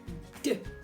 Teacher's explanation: tongue goes behind your teeth and it's a d sound